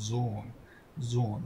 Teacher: zanorja kur shoqërohet pas saj me h, atëherë ajo lexohet pak sa e gjatë pas zgjatet dhe theksohet